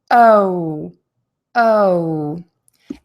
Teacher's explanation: So what you're going to do is your lips are going to be relaxed and rounded, and they're going to be moving to tense and rounded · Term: long O